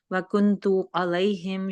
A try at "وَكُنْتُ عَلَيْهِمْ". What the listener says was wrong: تھوڑا سا اپنا لام کو اپلائی، لام کو لائٹ اچھا دیکھیں اپنے منہ کو نا، اپنے منہ کو ذرا فلیٹ رکھنا ہے بالکل، اور علیہم علیہم